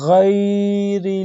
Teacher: غین کی آواز گلے کے سب سے اوپر والے حصہ سے آنی چاہیے۔